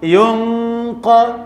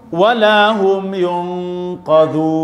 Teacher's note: Masih bunyi yun tu ke qaf. Jadi nun tu tebal.